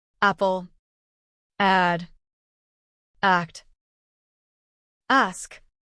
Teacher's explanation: place your hand on your throat as you say a and notice the vibration this happens because a is a voice sound